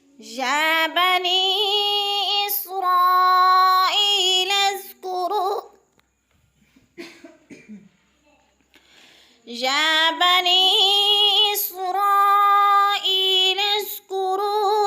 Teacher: یا بنی پہ یا مد کھینچ کر پڑھنا ہے، 5 حرکات کے برابر